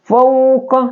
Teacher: Fa ini ya, dia adalah dalam ilmu tajwid fa itu adalah syafatain ya, 2 bibir